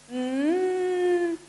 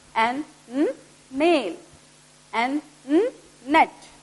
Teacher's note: Air will block in your mouth and come through your nose. It's a nasal sound. To check this sound also, you have to pinch your nose while producing the sound.